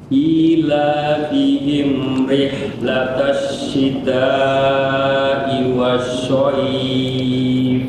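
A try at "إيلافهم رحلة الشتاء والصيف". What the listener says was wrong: Laisa syaw. So itu sama makhrajnya di sa. Tadi antum itu Abu masuknya itu di huruf makhrajnya di tengah lidah. Sya salah ya, bukan syaif tapi so. Sa so sa so. Was-sayf, bilang was-sayf.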